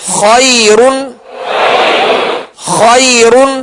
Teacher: دو پیش را کے پڑھے تو را کو پر پڑھیں گے، اس لیے کہ اس کی اصلی کیفیت کو ہم دیکھ رہے ہیں کہ را پر دو پیش کی علامت ہے، دو زبر کی علامت ہو یا زبر پیش ہو تو را کو پر پڑھیں گے، لہذا یہاں دو زبر کی دو پیش کی تنوین ہے لہذا را کو پر پڑھیں گے.